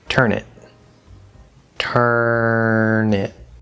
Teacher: consonant to vowel, the N will connect over to the second vowel I, turn it.